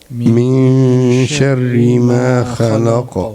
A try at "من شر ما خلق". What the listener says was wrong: Not kha. Kha is heavy. Kha. Khalaq.